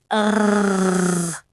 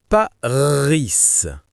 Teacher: Ça vient du fond de la gorge.